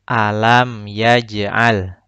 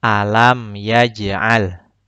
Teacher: Yaj, huruf jimnya harus dipantulkan. Karena ini bacaan qalqalah.